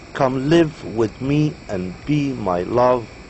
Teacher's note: consists of an unstressed syllable followed by a stressed syllable